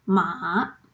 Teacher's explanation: The pitch of your voice goes low first, then rises up, like when you respond to people and say yes. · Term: third tone